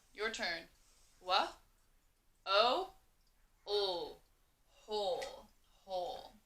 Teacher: So in this word, the W is kind of silent, and you only hear the H